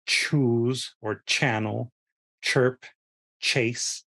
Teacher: the ch sound, which is a combination of the t and the sh